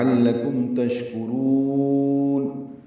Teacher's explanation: لعلکم عین وسط حلق سے ادا ہوگا، لام باریک ہے، کاف باریک ہے، میم ساکن پہ اظہار شفوی ہے. تشکرون شین ساکن ہے، اس پہ ہمس ہے، تفشی ہے، منہ میں آواز پھیلتی ہے تفشی میں اور سانس جاری رہتی ہے. ہمس ہے، کاف باریک ہے، را پر ہے، را کو لمبا کریں گے اور نون ساکن پہ اظہار ہوگا.